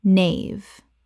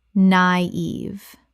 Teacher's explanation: Two syllables with a dieresis over the I, meaning both vowels are pronounced separately.